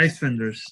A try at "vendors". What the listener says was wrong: Ice with a V. With a V. It's the same. I think it's the same word in Spanish. Ice vendors.